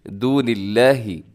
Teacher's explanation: لفظ اللہ کو آپ نے باریک پڑھنا ہے، کیونکہ لفظ اللہ سے پہلے نون کی نیچے زیر ہے، آپ نے اس کو ہرگز لمبا نہیں کرنا، دون اللہ نہیں کرنا بلکہ دون اللہ ایسے کر کے پڑھنا ہے.